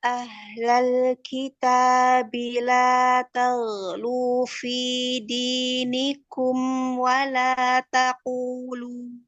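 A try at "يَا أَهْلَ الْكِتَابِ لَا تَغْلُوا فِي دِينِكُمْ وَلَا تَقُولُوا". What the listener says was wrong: Dalnya coba majukan lagi mahrotnya. Kayak ngucapin huruf dal tapi jangan pakai punggung lidah. Kayak cadel gitu, kayak cedal ya. Nah, itu masih kebelakangan. Ujung lagi. Makhraj dal dari mana? Ujung lidah. Tempelkan dengan gusi tempat tumbuh gigi seri atas. Jadi di belakang gigi seri atas, di gusinya. Jadi jangan pakai punggung lidah ya. Jadi ujung lidah yang ditempelkan.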